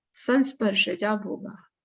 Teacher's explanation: before visarga is a, and after visarga any vowel or a soft consonant, so again visarga is dropped. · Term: visarga is simply dropped